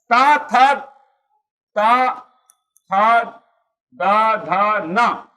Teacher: त एक ऐसा व्यंजन है जिसमें जीभ का अगला भाग दोनों दांतों के बीच में आ रहा है और दांत छूकर वो टच जैसे दांत को टच कर रहा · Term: दंत यंजन